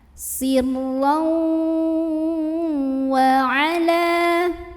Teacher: Sirlau wa ala, lam tabi'i karena ada alif sebelumnya fathah, maka huruf lam yang baris fathah kita panjangkan 2 harokat